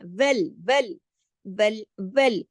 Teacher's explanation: اس کو وال نہیں پڑھنا، موٹا نہیں کرنا